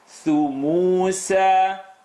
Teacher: tip of the tongue behind the top teeth